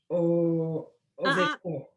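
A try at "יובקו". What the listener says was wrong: Almost. Remember, that's a yud at the beginning, the Y sound.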